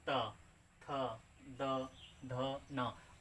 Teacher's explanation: ट, ठ, ड, ढ, अड़ा हो गया। दंत, दंत में क्या होता है कि जीभ जो है ऊपर वाले दांत को टच करेगा, जैसे त, थ, द, ध, न।